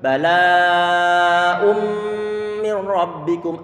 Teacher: Tidak ada suara nunnya. Kenapa? Karena telah diidghamkan. Karena telah dimasukkan.